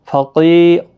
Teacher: قی یا مدہ ہے، قاف مستعلیہ ہے، پر بھی پڑھنا ہے، رو بھی پر پڑھا جائے گا۔